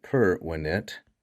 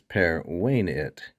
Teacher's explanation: The perfect tense is pervenit, with a long E.